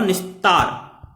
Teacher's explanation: ता का उच्चारण स्थान दंत है, इसीलिए दंती सा हो जाएगा। दंती सा हम छोटे सा को कहते हैं, इसलिए यहाँ पर निधन तार बराबर निस्तार हो जाएगा।